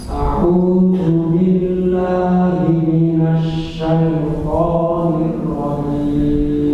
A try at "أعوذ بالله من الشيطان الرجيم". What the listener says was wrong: kenapa enggak tahan? Shin dan ra ditahan. Asy-syaitonir rajim.